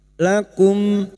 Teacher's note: pertemunya mim sukun dengan huruf ijaiah selain mim dan ba namanya bacaan izhar syafawi dibaca jelas tanpa mendengung